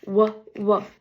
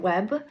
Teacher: Manner is that it glides and then it is a voice sound.